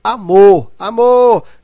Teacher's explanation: o mor é a sílaba mais forte. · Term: sílaba tônica